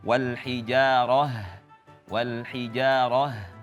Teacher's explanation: wal hijaroh dihameskan betul-betul ya